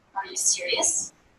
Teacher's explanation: A question going up in pitch conveys perhaps an open attitude, concern for the person.